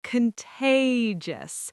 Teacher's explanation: The middle syllable gets the stress and it should feel playful.